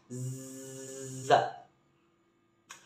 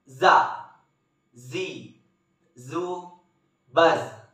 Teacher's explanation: Sifat lain huruf za ini karakter khas dengan suara dengungan tawon.